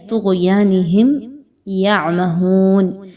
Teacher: اظہار شفوی ہوگا، کسی قسم کا بھی غنہ نہیں کرنا. اور اس کے بعد یعمہون، عین کی ادائیگی کو بہت واضح طور پر ادا کرنا ہے.